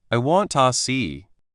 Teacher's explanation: To can often sound like ta when it is not stressed.